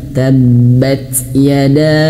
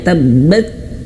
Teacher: huruf ta sukun, maka keluarkan anginnya.